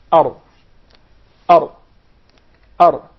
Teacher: it's articulated from the tip of the tongue with what lies opposite to it of the gums of the two front top incisors